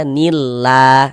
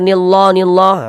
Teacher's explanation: kalau ada lafaz Allah yang sebelumnya harakat kasrah maka lafaz Allahnya dibaca tarkik. Dibaca tipis. Huruf lam yang di tengah nih, huruf lam jalalahnya tuh kita baca tipis, kita baca tarkik.